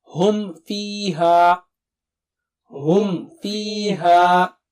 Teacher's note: میم ساکنہ کے بعد واو اور فا آئے تو پھر میم ساکنہ کو صاف پڑھیں گے، کیونکہ ان دونوں کے مخرج میم کے قریب ہیں. آپ کو یاد ہے نا، ما با وا فا، یہ 4 ہونٹوں سے ما با وا فا.